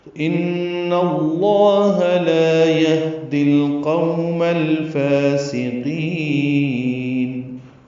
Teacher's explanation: فا کو 2 حرکات لمبا کرنا ہے، سین صفیر کی آواز سے ادا کریں گے، قاف پر پڑھیں گے، نون ساکن پہ اظہار ہے. · یہدی میں ہا ساکن پہ ہمس ہے، دال کو القوم کے لام سے ملا دیں گے، قو غولین ہے. · ان میں نون مشدد پہ غنہ ہے، اور اس کی زبر کی وجہ سے لام اس میں جلالہ پر پڑھیں گے، 2 حرکات لمبا کریں گے.